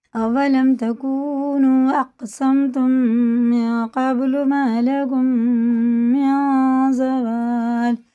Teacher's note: یہ میم ساکن کے بعد میم آتا ہے تو یہ غنہ کر کے پڑھنا ہوتا ہے